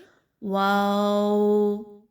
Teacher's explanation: होठ किसी चीज के साथ टच नहीं करने आपने ना दांतों के साथ ना जुबान के साथ बल्कि सिर्फ होठों को गोल करने से यह लेटर अदा होगा · ہونٹوں سے تو یہ ادا ہوگا، لیکن ہونٹ کسی چیز کے ساتھ ٹچ نہیں کرنے آپ نے، نہ دانتوں کے ساتھ نہ زبان کے ساتھ، بلکہ صرف ہونٹوں کو گول کرنے سے یہ لیٹر ادا ہوگا